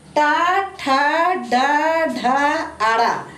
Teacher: ये जो है जीभ की उल्टी हुई नोक का, जीभ की उल्टी हुई नोक का निचला भाग मसूड़ों को स्पर्श करता है। जब आप ट, ठ, ड, ढ, अड़ा बोलते हैं तो आपकी जीभ जो है उलट जाती है। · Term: मूर्धन्य व्यंजन